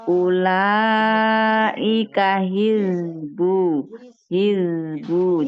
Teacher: Huruf zai tidak dipantulkan. Dia mengalir